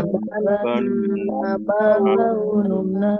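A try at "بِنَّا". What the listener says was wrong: Kalau yang di guna itu ditahan dulu. Berapa harokat? 2 harokat guna atau setara dengan 3 ketukan. Jadi jangan terlalu cepat.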